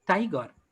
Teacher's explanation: grammatically, stress falls on, let's say, the very beginning of the words